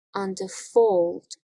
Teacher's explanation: it starts with two unstressed syllables and is followed by a stressed syllable